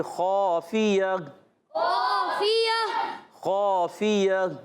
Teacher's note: جب کبھی عرف مستعلیہ کے بعد الف آ جائے تو حرف مستعلیہ کا وہ الف بھی موٹا ہو جائے گا. تو آواز آئے گی خافیہ خافیہ خافیہ.